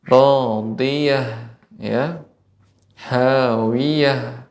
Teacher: huruf ha ketika sukun juga diberikan ada aliran nafas